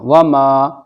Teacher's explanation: الف سے پہلے میم کے اوپر زبر ہے تو یہاں پر الف مدہ ہوگا یعنی الف کھنچ کر پڑھا جائے گا